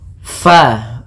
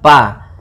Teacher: Usahakan di dalam melafalkan huruf fa ini harus ada aliran nafas, karena fa memiliki sifat yang namanya sifat hamas.